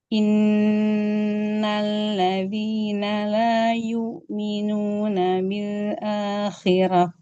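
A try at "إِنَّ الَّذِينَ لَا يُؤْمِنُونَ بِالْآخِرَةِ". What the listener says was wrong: jadi jangan masuk ke hidung. Dhammahnya sempurnakan lagi, harokatnya sempurnakan lagi, fathahnya juga.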